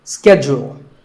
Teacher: In American English, this is schedule. The first syllable is ske and the second is jewel.